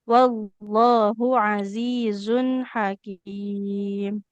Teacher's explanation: di sini h-nya domah enggak ada wau. Jangan dipanjangkan.